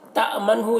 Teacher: یہاں پر حمزہ ساکنہ ہے، جھٹکا لگے گا۔ منہ، یہاں پر نون ساکن میں اظہار ہوگا۔